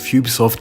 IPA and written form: ˈjuːbisɒft (Ubisoft)